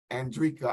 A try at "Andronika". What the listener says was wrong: Andronika. 4 syllables.